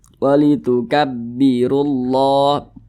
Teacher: Huruf ro dibaca tabkhim, dibaca tebal karena dia memiliki tanda baca dhammah, sehingga pangkal lidah kita itu naik ke atas.